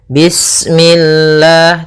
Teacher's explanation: lafal Allah ketika sebelumnya kasrah maka dia dibaca dengan tipis ya dengan L.